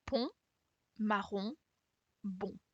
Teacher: The sound on is very round. And you have this sound in words like pont, marron, bon.